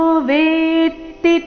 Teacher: ವೇ ಮೇಲೆ ನೈಸರ್ಗಿಕವಾಗಿ ಆಘಾತ ಬರುತ್ತೆ